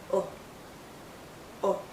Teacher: It's also more a relaxed sound. Our lips are still rounded, but it's not a tight circle. It's a relaxed circle. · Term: short vowel sound